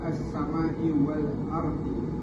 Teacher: ada mat mufassir, sebab huruf mat bertemu hamzah pada kalimah lain, dibaca 4 hingga 5 harakat